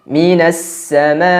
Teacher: karena pada pengucapan hamzah khususnya ketika dia sukun, suara dan nafasnya langsung berhenti, tertahan. Karena sifatnya jahr dan syiddah tadi.